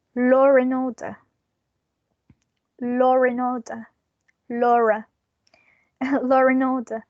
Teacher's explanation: we are going to include these r sound to a link these two words together even though there is not an r in the spelling